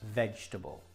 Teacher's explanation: the correct pronunciation is vegetable the E in the middle is not pronounced vegetable another